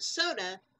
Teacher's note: for the word soda the accented syllable has the long o sound